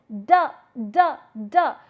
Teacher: you are touching the tip of the tongue with the upper teeth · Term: dental